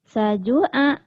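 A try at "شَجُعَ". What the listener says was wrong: Shin. Syajua. Syajua.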